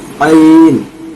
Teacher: हल्क से आवाज निकलेगी सीने के पास से